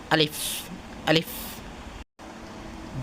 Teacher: আলিফ মদের হরফে হওয়ার কারণে মুখের খালি জায়গা হইতে উচ্চারিত হয় আলিফ